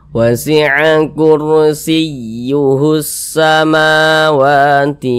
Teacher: ma dengan wa dibaca panjang masing-masing dibaca Dua harakat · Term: Mad thi'i